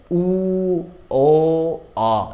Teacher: দেখো মুখটা আস্তে আস্তে বড় হচ্ছে, উ, ও, অ। গোল হয়েছে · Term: গোলাকৃত